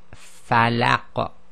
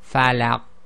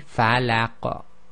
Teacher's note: Now the reason for that is when we say the qaf, the back of the tongue touches towards the back of the top back of the throat. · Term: echo